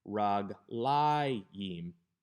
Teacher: The difference is because even though regel is a segelet, the accent doesn't shift all the way to the end of the word, but to the second to the last syllable, raglayim, because this is a dual.